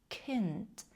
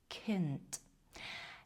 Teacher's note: І це той звук, який ми вимовляємо з придиханням.